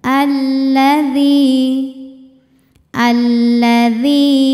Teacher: Lam tasydid itu tidak memiliki dengung artinya tidak perlu ditahan saat membunyikan Lam tasydid Jadi bukan alladzi enggak tekan saja ya alladzi alladzial ujung lidah